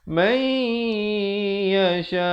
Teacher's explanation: Di sini idgham biqunnah masuk beserta dengung. Asalnya man, tetapi di sini kena baca may yasha.